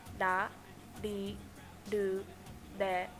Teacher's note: r sound is like a mix between an l and an R resulting in a D sound